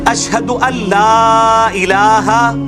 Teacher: یہ ان لا الہ لکھا جاتا ہے لیکن نون بیچ میں سائلنٹ ہو جاتا ہے